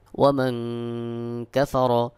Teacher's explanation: নুন সাকিনের পরে কাফ ইকফার হরফ এখানে ইকফা গুন্না করতে হবে